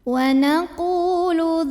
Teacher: Karena ada waw sukun yang didahului baris dhammah. Maka cara bacanya qaf yang berbaris dhammah kita panjangkan 2 harokat saja. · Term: mad tabi'i